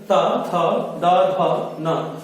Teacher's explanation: त, थ, द, ध, न, ये दंत के द्वारा उच्चारित किए जाते हैं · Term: ता वर्ग